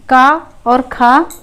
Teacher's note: जब हम का और खा बोलते हैं तो इसमें कोई कंपन नहीं होता है बोलने में। ठीक है, स्वर यंत्र में हमारे कोई बोलने में आवाज़ में कंपन नहीं होता है। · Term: अघोष